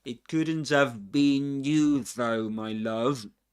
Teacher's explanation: Okay, weak pronunciation of we don't say have but have with a schwa and we omit the the h sound at the beginning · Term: weak form